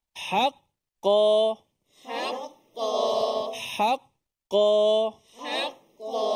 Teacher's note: Bila sabdu atas qaf, atas qaf tu, dimatikan qaf tu dulu.